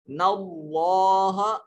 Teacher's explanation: جلالت سے پہلے زبر آ گئی تو یہاں لام کو موٹا کر کے پڑھیں گے.